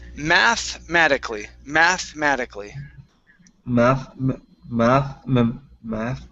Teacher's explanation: the e in between the th and the m we do not need to say